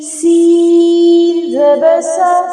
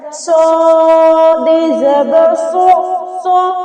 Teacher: اس کے بعد ہے صاد، صاد میں بھی تو سیٹی ہوتی ہے نا، لیکن سین اور صاد میں فرق یہ ہے کہ صاد موٹا پڑا جائے گا